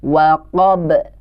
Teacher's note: di ujung ayat ada qalqalah huruf ba yang juga kita harus pantulkan membacanya.